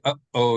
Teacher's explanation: if you say uh oh there's like a break between the two syllables